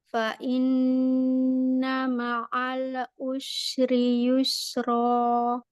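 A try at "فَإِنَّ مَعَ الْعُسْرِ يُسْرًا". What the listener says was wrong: Hati-hati pada lam, jangan ma'al ditahan saja. Fa inna ma'al us. Masih ma'al usri, nanti latihan pengucapan huruf ain.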